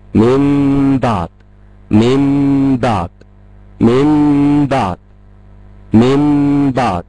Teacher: أول حاجة هشيل النون واستبدلها بميم، الميم هخفيها، الإخفاء هيكون مع غنة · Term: الإقلاب